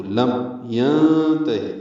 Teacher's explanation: میم ساکن پہ اظہار شفوی ہے، ظاہر کر کے پڑھیں گے میم ساکن کو. لم ینتہی میں نون ساکن کے بعد تا آنے کی وجہ سے اخفا ہے، تا اور ہا کو جلدی پڑھیں گے.